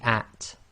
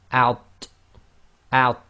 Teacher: differentiate between the at, which is light, i.e. tarqiq, and out, which is heavy, so it's tafkhim plus it's qalqala, so it's got an echo as well.